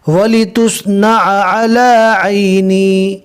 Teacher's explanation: تینوں عینیں اچھے سے حلق سے ادا کرنا ہے